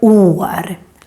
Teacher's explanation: the å is long because the å is just followed by one consonant, the r. That's why it becomes år, long å.